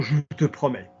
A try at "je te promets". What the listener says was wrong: No. I don't want it separate. I don't want it separate. Never.